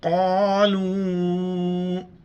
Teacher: بڑی قاف ہے، موٹا کر کے پڑھیں گے